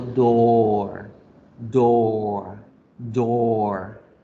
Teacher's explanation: la O larga, yo la alargo tantico y digo door, door, door.